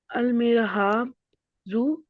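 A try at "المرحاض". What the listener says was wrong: दू, इलल मिरहा, दी, दी। आप इसको ज्वाद बोलती है, पाकिस्तान में ज्वाद ही बोलते हैं, अरब लोग कहते हैं कि हमारी जुबान में ज्वाद नहीं होता, दौद होता है, दौद। इलल मिरहा, दी।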